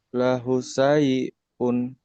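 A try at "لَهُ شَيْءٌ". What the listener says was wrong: Launya panjang. Lahu panjang. Shinnya gede. Shinnya gede. Lahu syai'un. Lahu syai'un.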